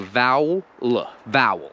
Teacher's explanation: i don't care about the e in vowel i'm like it's almost like i'm ignoring the e i'm saying vowel vowel and the same is true for focus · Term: ignoring the vowel